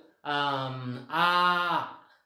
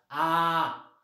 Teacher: okay, आता पुढच्या म्हणजे कधी कधी जीभ म्हणजे ओपन इन द सेन्स म्हणजे काय, ती जसं आपलं तोंड आ केल्यावर ओपन वगैरे होतं, जीभ म्हणजे नॅचरल स्थितीमध्ये आहे, खालच्याच लेवलला आहे, बिलकुल उंचावलेली नाही ती